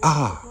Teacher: the letter a is not a long a as we say in English or the West it's ah